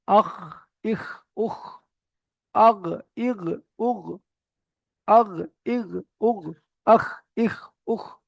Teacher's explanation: গইন আর খ, এটা কণ্ঠনালীর একদম শেষ হতে উচ্চারিত হয়